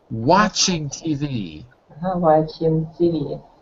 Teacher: So it's an open A. Wa, like father.